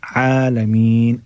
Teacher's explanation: आइन को निकालिएगा हलक अपने गले के दरमियान वाले हिस्से से